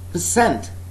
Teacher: The first syllable of the next word, percent, first syllable is unaccented